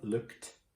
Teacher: it sounds tricky because it sounds like there's a T at the end